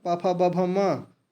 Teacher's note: इनका स्थान ओष्ठ होता है